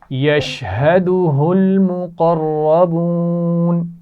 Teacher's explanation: دو دفعہ ہا آئی ہے اس کو واضح کر کے پڑھنا ہے لیکن بہت زور نہیں لگانا